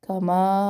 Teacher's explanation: کما مد ہے، مد ہم نے دو الف برابر لمبا پڑھنا ہے